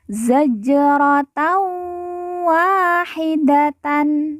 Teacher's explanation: Jim sukun kita baca pantul karena merupakan huruf Qalqalah